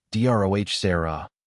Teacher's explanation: with the emphasis on the first syllable